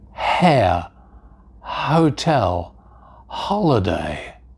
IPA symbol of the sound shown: h